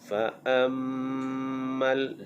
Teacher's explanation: mim yang bersyaddah dibaca dengan dengung wajibal gunnah. Fa'ammal dengung di bibir.